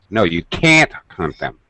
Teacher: when we use a negative contraction can't our voice will rise